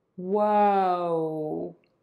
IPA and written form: woʊ (WHOA)